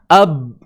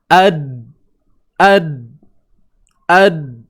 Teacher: Qaf, ta, ba, jim, dal. 5 huruf ni semua suara yang tertahan pada asalnya.